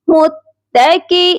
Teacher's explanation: حمزہ یا زیر ای, متکی. حمزہ کو ایک الف کے برابر لمبا کریں گے کیونکہ حمزہ کے ساتھ یا مدہ ہے